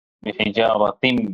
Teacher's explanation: بالکل یہ ادغام مع الغنہ ہوگا، غنہ کے ساتھ کیا جانے والا ادغام ہوگا۔